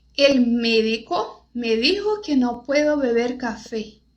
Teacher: É sempre E. Todas as palavras que tem a letra E é o som fechado.